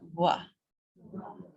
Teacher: the V is an in between a V and a W. So it's kind of a wa.